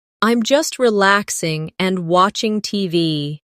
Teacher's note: No long pause between relaxing and and.